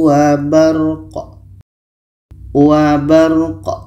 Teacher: Qa ini mati maka qalqalah, ada pantulan.